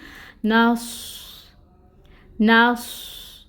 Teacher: सौद हरूफ मुस्तालिया में से है, इसको मोटा पढ़ेंगे, पुर करके पढ़ेंगे और इसमें सिटी भी आएगी, ठीक है। साकिन हालत में है, इसकी ये सिफत ज़्यादा वाज़िह होकर सामने आएगी।